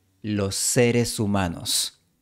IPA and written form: lo'se.ɾe.su'ma.nos (los seres humanos)